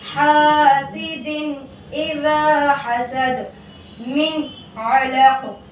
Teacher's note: اگر ان 6 حرفوں میں سے کوئی حرف تنوین یا نون ساکن کے بعد آ جائے تو تنوین والا حرف یا نون ساکن جلد پڑھا جائے گا، نہ کھینچے گا، نہ غنہ ہوگا، جیسے حاسد اذا حسد، من علق۔ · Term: اظہار حلقی